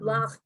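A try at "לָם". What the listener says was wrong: No. What's the last letter, honey? So why are you putting a ch in there?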